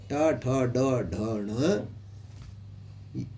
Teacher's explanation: पांच अक्षर जो आते हैं ट ठ ड ढ ण यह मूर्धा से बोले जाते हैं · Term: मूर्धन्य